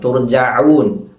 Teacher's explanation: തുർജഊൻ, ഐനും ശ്രദ്ധിക്കണം. തുർജഊൻ, ഐനിന്റെ മഖ്റജ് തൊണ്ടയുടെ മധ്യഭാഗം.